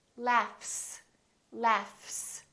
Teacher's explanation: word laugh this G H is actually an F sound right there's no vibration in my vocal cords so the F is actually a voiceless sound